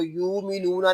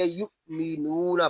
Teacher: آگے حمزہ ساکنہ میں جھٹکا ہوگا،